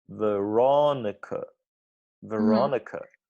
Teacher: The ro is very, very big. And then the ni we change to just n, and ka we change to just k.